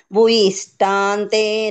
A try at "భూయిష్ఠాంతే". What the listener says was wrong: ఇక్కడ భూకి దీర్ఘం ఉంది. భూయిష్ఠాంతే. ఇక్కడ మా అని చెప్పద్దు.